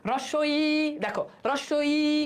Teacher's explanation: Central point থেকে রস্বই উচ্চারণ করলে জিহ্বাটা আগাই যায়।